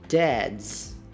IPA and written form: dædz (Dad's)